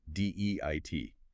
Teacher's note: imagine you're starting with an A sound and immediately gliding into an E sound. Your tongue should start relatively flat and then lift towards the roof of your mouth. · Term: long A sound